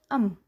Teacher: bilabial nasal ialah bunyi m